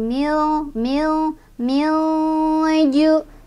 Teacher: nun sukunnya dibaca samar sambil berdengung, sambil lidah kita siap-siap ke huruf berikutnya yaitu ke huruf jim, ya. Karena jim itu tidak jauh dari, maaf, tidak terlalu jauh dari nun dan tidak juga dekat. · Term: ikhfa ausat